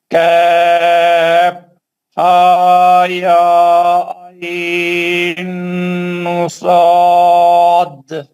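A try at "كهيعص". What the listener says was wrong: اقفا کو کھینچنا نہیں ہے. آئین 6 حرکت، اقفا بالکل 2 ہی حرکت. آئی یوں یوں یوں آئی. آئین جو ہے 6 حرکت کرنا ہے پورا.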